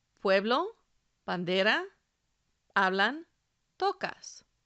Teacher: the stress is on the second to last syllable we really mean counting the vowels from the end the same